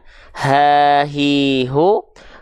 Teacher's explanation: yang tengah keluar dari bagian tengah tenggorokan kita ha hi hu Kalau ha besar dari pangkat tenggorokan